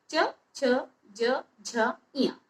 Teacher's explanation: इनका उच्चारण स्थान हुआ तालु और इस च वर्ग को बोला जाता है तालव्य